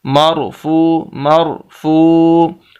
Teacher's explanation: ہم فا کو لمبا کر رہے ہیں، حالانکہ اس کے اوپر پیش ہے · اوپر ہونے کی صورت میں جو بھی حرکت اوپر آئے گی تو موٹا، نیچے ہوگی تو باریک. تو یہاں پر اوپر جزم ہے، سکون ہے، اس وجہ سے را کو موٹا پڑھیں گے. مرفو مرفو، فا کو واو کے ساتھ ملائیں گے، واو ساکن ہے.